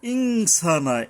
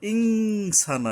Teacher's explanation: নুনের উপরে এখানে অনুস্বর উচ্চারণে উচ্চারণ করতে হবে